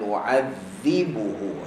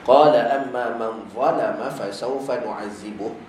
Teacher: zai hujung lidah jumpa gigi, hujung gigi bawah